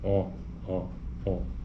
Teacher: um exemplo de o um o ó ele tá dizendo que a posição da língua é posterior portanto é mais profundo da boca